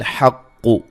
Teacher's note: قاف کو موٹا ادا کریں گے